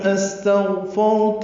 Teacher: استغفرت میں سین ساکن پہ ہمس ہے، غین ساکن پہ اظہار ہے، را ساکن پر پڑھیں گے اور اس میں صفت تقریر ہوتی ہے، مکرر ہے یہ.